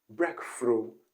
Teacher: she replaces the th with letter f